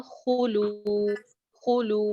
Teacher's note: खू छोटी सी आवाज है, लू एक अलिफ लंबा